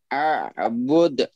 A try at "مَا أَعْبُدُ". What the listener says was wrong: عین کو صاف، چلیے پڑھیے 3 بار، ما اعبد، ما اعبد،